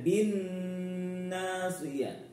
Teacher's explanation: nunnya bertasydid harus dengung ya